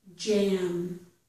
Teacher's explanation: for the j, we're touching the top of our mouth for the d part of this sound